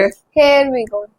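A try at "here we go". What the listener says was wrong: नहीं, हेयर नहीं है, हेयर मतलब बाल हो जाता है। हियर वी गो क्या बोलेंगे? जी, HER, हेयर वी गो।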